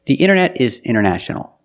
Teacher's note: You have NT in the middle, the T is silent.